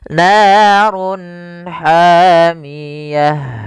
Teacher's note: Run ketemu ha, jelas kita namakan dengan izhar halqi. Suaranya harus dibaca dengan jelas. Izhar jelas, halq karena dia bertemu dengan huruf-huruf halq setelahnya, yaitu huruf ha, maka harus dibaca dengan jelas.